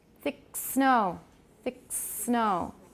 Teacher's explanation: the back of the tongue comes down first then the tip of the tongue goes to the alveolar ridge gets very close and allows the air to pass very turbulently between the tongue tip and the alveolar ridge